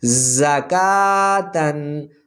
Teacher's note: زا زبر زا، کاف کھڑی زبر کا، زکا، تا 2 زبر تن، زکاتن، زا حروف صفیریہ میں سے ہے، پڑھتے ہوئے سیٹی کی آواز نکلے گی